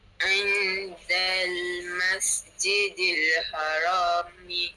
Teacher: pada nun mati jumpa dengan huruf dal lah. Hukumnya adalah ikhfa.